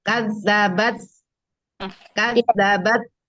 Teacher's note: ujung lidah bertemu dengan pangkal gigi seri atas